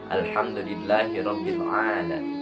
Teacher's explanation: Di lafaz alham al tidak mantul atau tidak mempunyai qalqalah. Yang kedua rabbil, jangan rabbil tapi rabbil a. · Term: lam sukun